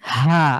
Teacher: কন্ঠের মাঝখান থেকে হলকের মাঝখান থেকে চাপ দিয়ে একবার আরেকটু চাপ দিতে হবে আপনি খুব হালকা করে উচ্চারণ করছেন